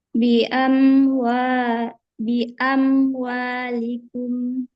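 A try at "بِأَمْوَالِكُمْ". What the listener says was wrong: Tapi ketika kita membaca kasroh, tidak usah sampai bi amwalikum, likum. Ntar susah. Jadi kalau kasroh, itu kita hanya membuka rahang, a. Ketika kasroh, i, ke rahangnya turun. Ketika dhammah, u. Jadi bi amwalikum, likum.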